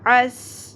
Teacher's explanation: عین سین زبر عس، سین میں سیٹی کا ایلیمنٹ کلیئر ہوگا، عس۔ اگین عین زبر ع، عس ع، سین زبر س، عس عس۔